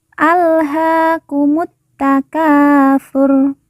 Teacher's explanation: lalu ka kita baca panjang dua harakat karena di depannya terdapat Alif yang merupakan tanda baca panjang dua